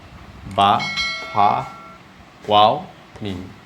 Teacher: এই 4টি বর্ণ আখর ওঠ থেকে বর্ণিত হয় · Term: আল হুরুফুস সাফিয়া